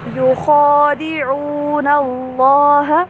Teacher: خا کو پر پڑھنا ہے، اس کے اوپر کھڑی زبر ہے، اس کو لمبا بھی کرنا ہے، اور اللہ کا نام بھی یہاں پہ موٹا کر کے پڑھا جائے گا۔